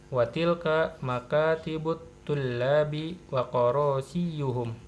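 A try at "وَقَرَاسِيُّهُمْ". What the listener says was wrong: Karo bukan koro ya.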